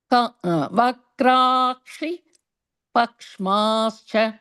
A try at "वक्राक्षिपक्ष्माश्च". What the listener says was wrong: Correct.